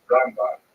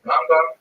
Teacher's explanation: Rambam is pronounced with the emphasis on the first syllable, Rambam, and Ramban is pronounced with the emphasis on the second syllable, Rambam and Ramban.